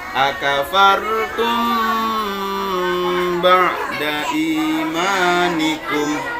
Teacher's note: Bacaan dengung itu ini mim tasdid, mim mat sukun bertemu dengan ba. Mim sukun bertemu ba ini namanya ikhfa safawi, samar-samar di bibir.